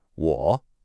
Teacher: Your voice starts in the middle, it dips down low, and then it comes back up. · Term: third tone